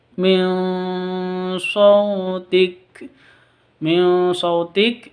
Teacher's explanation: nun sukun bertemu dengan shad, nun mati bertemu dengan shad, dibaca samar disertai dengan dengung, ikhfa hakiki